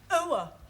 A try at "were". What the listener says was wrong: Almost. Try again, but this time, don't say ower, just were.